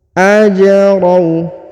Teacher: huruf ja dipantulkan ya karena berharokat sukun. Ajrau ya, dipantulkan atau diqolqolahkan ya.